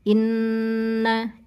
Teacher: di nun ketemu nun idgham bi gunnah, ditahan 3 ketukan. Inna hitungan ketiga masuk ke na.